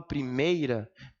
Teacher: quando eu falo primeira, o I já é o final da minha respiração. Isso é um ditongo, tá, pessoal?